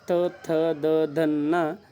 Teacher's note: ದಂತ್ಯ ಅಂದ್ರೆ ಹಲ್ಲು ಹಲ್ಲುಗಳ ಬಳಿ ಹುಟ್ಟುವ ಅಕ್ಷರಗಳಿಗೆ ನಾವು ದಂತ್ಯಾಕ್ಷರಗಳು ಅಂತಹೇಳಿ ಕರೀತೀವಿ